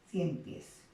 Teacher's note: ¿Dónde está la mayor fuerza de voz? En este caso en la última sílaba